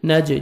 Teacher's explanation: جیم حروف قلقلہ میں سے ہے، ڈبل ساؤنڈ آئے گا۔